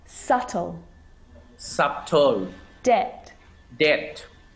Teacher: my lips aren't closing and coming together to form the b sound i'm just pronouncing the t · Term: silent